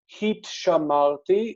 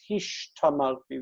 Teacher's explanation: when there's a sheen and a taf, there's a metathesis where they trade places. So instead of heat shamarti, it's hish tamarti.